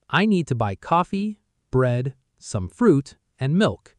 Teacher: Coffee, voice rises, bread, voice rises, some fruit, voice rises, and milk, voice falls. The falling on milk is the signal the list is finished. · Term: the list pattern